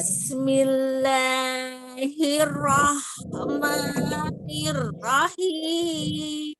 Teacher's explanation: lanya tidak terlalu panjang. Lanya dua harokat saja.